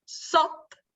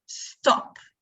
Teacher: they might leave out the sound t, so they say sop instead of stop